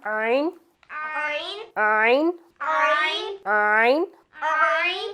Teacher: आइन हलक का दरमियान वाला हिस्से से निकलता है, दरमियान वाले हिस्से से, हलक का जो दरमियानी हिस्सा है वहाँ से आइन और हा, आइन और आइन की प्रैक्टिस करेंगे थोड़ी सी हम। · आइन और हा जो है वो हलक के दरमियान में से निकलता है